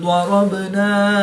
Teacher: را پر زبر ہے تو را کو پر یعنی موٹا پڑھیں گے۔